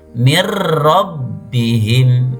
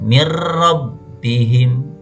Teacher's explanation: Nun sukun ketemu dengan lam walakillah bukan walakin laun salah akan tapi dibaca tidak dengung walakin laa ya'lamun huruf ro mirbihim dimasukkan ditasdidkan tapi tidak dengan dengung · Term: idgham bila ghunna